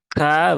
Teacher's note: kafnya tunaikan sifat hamsnya ya maka k dengan tipis saja tidak perlu berlebihan